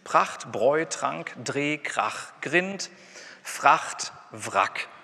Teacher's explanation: Das sind die mit einem Plosiv oder einem Frikativ und dann kommt R oder L, also ein Liquid.